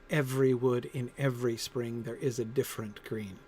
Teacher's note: The V's and the double F, which of course are almost the same sound, one with voice and one not. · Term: almost alliteration